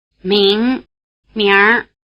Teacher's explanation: notice that the NG sound drops out when the R is added, but leaves a nasal quality in the vowel. And also the vowel sound sneaks in. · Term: R ending